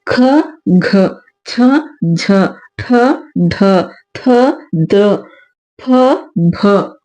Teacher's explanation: ಎರಡು ಮತ್ತು ನಾಲ್ಕನೇ ಸಾಲಿನಲ್ಲಿ ಬರುವಂತಹ ಅಕ್ಷರಗಳನ್ನ ನಾವು ಮಹಾ ಮಹಾಪ್ರಾಣಾಕ್ಷರಗಳು ಅಂತಹೇಳಿ ಕರೀತೀವಿ ಇವುಗಳನ್ನ ನಾವು ಹೆಚ್ಚು ಉಸರನ್ನ ಇಟ್ಕೊಂಡು ನಾವು ಉಚ್ಚಾರ ಮಾಡೋದ್ರಿಂದ ಅವು ಮಹಾಪ್ರಾಣಾಕ್ಷರಗಳು ಆಗ್ತಾ ಹೋಗುತ್ತೆ